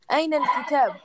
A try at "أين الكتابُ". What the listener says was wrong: Remember, remember to pronounce the last vowel. So in this case, it's a dhamma.